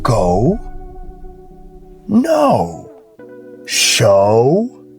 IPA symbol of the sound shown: oʊ